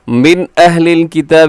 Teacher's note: من نون ساکن کے بعد حمزہ ہے، تو یہاں پہ کیا ہوگا؟ اظہار حلق کی